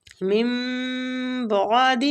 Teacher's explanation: من بعد نون ساکنہ کے بعد میم ہے اور با ہے تو ہم میم کے ساتھ نون کو بدل کے پڑھیں گے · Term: اقلاب